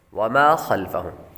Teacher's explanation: خا حروف مستعلیہ میں سے ہے اس لیے اس کو پر پڑھیں گے